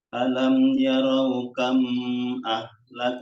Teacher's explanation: mim sukun bertemu hamzah ya. Izhar safawi.